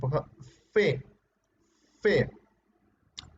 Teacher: el labio inferior choca con los dientes superiores